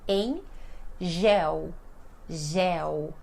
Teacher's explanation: em M também, nós não fechamos a boca, O M, quando ele está sozinho, ele tem som de N